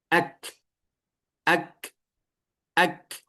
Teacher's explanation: Kaf ketika sukun memiliki sifat hamas mengalir udaranya. Hanya ketika sukun.